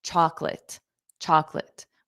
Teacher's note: Okay, that middle O is not pronounced.